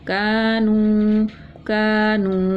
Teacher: کاف الف زبر کا، نون واو پیش نو، کانو کانو، یہ الف مدہ یہ واو مدہ، ایک الف کے برابر دونوں کو کھینچ کے پڑھا